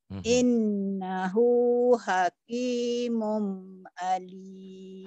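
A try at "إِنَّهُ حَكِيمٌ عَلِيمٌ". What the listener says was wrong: Hakimun idhar, jelas. Innahu hakimun alim.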